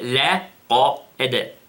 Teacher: Notice the lightness of the lam, and then the heaviness of the qaf, and then the قَلْقَلَ.